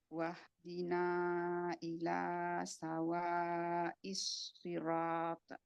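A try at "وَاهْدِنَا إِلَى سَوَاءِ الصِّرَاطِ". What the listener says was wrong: Mana qalqalahnya Bu? nggak kedengeran. Sekali lagi.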